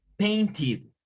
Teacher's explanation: De paint, en cuanto al verbo, tendríamos que decirlo con un sonido id